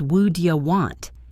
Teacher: What do you want? Becomes would ya want. The what is just a puff of air.